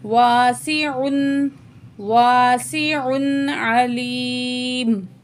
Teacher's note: تو الف مد ہے، 1 پوائنٹ کھینچ کے پڑھیں گے، سین میں سیٹی والی آواز ہوگی